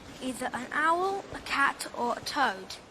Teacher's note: The last item toad is realized in a falling tone. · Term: default fall